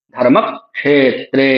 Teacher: जो हलंत वाला क है उसका उच्चारण पिछले वर्ण के साथ ही कर लीजिए। म शब्द है ना म के साथ ही कर लीजिए।